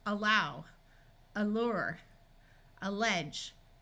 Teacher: a muffled sound that usually sounds like uh especially at the beginning of a word